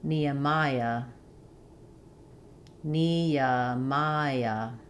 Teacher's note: a little y sound links those vowels